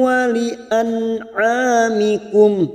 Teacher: dibaca jelas tanpa mendengung, namanya bacaan idhar halqi